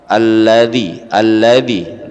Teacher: ujung lidah diletakkan di belakang gigi alladzi alladzi belakang gigi atas ya ini gigi ini lidah senggol